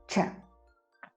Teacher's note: c'est un CH comme s'il y avait un T avant